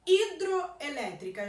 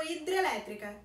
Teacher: Esse O no final de hidro deixou de ser pronunciado. Então eu tenho perda, eu tenho alteração fonética. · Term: perda fonética